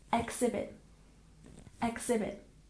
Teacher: exhibit we stress the first syllable